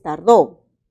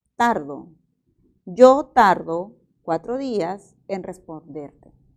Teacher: esta palabra es tardó pero también se puede pronunciar tardo yo tardo cuatro días en responderte Entonces sí puede moverse el acento